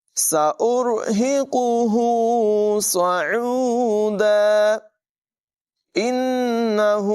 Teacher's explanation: نون مشدد میں غنہ ہوگا · عین کی آواز حلق کے درمیان والے حصے سے نمایاں ادا کریں گے